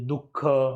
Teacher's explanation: उच्चार ह ध्वनीतील हलका हसडा देऊन केलेल्या उच्चारासारखा आहे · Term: विसर्ग